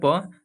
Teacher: जब जब बोलिएगा प तो दोनों आपका ओठ आपस में मिलेंगे, ठीक है। ओठ को बंद कर कर आप प फ और म का किसी का उच्चारण नहीं कर सकते हैं, ठीक है। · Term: ओष्ठ